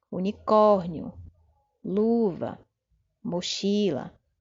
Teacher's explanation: Seriam as palavras que têm a sílaba tônica na penúltima posição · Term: paroxítonas